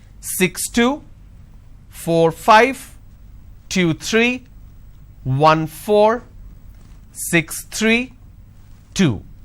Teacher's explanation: for every two digit the second digit my tone is going up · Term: intonation